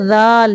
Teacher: زبان کی نوک جب اوپر والے سامنے کے دو دانتوں کے سرے سے لگے تو ذال ادا ہوتا ہے